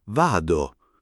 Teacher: vado con la a aperta